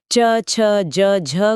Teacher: उच्चारण के समय जीभ तालू को स्पर्श तो करती ही है लेकिन हवा को बाहर निकलने के लिए थोड़ा एक्स्ट्रा संघर्ष भी करना पड़ता है। मतलब स्पर्श और घर्षण दोनों है। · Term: स्पर्श संघर्षी